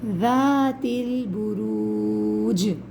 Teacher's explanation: ذات البروج، ذات میں ذال کو نرمی کے ساتھ پڑھیں گے، زبان دانتوں کے درمیان آئے گی